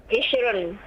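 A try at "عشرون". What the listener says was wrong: Panjang. Ishrun.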